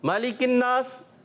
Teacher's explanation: نون مشدد یا میم مشدد میں ہمیشہ کیا کرتے ہیں؟ غنہ کرتے ہیں. ایک الف کا غنہ کریں گے. غننے کی معنی کیا ہے؟ ناک میں آواز لے کر جانا